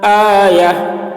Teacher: گولتا ہے لیکن آیتن نہیں پڑھ رہے، یہ گولتا کو ہا سمجھ کر پڑھ رہے ہیں. آیا یعنی یا ہا زبر یا، تو آیا گولتا ہا سے بدل گیا.